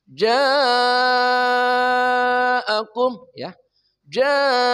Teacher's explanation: Mad thabi'i bertemu hamzah pada satu kata. Membacanya minimal 4 harakat. Boleh lima, boleh enam. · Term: mad wajib muttasil